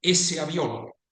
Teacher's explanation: when you pronounce words in connected speech, you may find instances such as ese avión, means that aircraft, or lago azul, that means blue lake, where the e and the o become glides